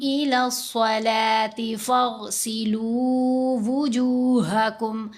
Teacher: صاد کو بھی موٹا پڑھنا ہے اور غین کو بھی موٹا پڑھنا ہے. یہ جو دونوں حروف ہیں یہ حروف مستعلیہ میں سے ہیں، صاد بھی اور غین میں.